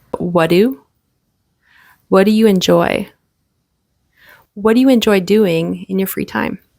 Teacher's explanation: the T sound disappears because it's followed by a D.